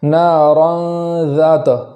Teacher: نارا کے اندر را کو پور کریں گے اور یہاں اخفا پایا جاتا ہے تو ایک الف کے برابر گنہ کریں گے